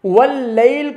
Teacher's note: واللیل لام کو موٹا نہیں کریں گے، بلکہ واللیل لام باریک پڑھا جائے گا۔